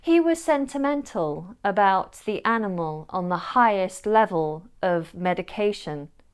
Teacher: the schwa sneaks in and replaces the A or the E in words ending with consonant AL or consonant EL